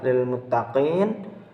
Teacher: Lalu pada lafaz berikutnya yakni lafaz lil muttaqin, di situ terdapat hukum bacaan mad arid lisukun dan disebabkan karena adanya mad tabi'i yang berada di akhir ayat dan dibaca panjang 4 harokat.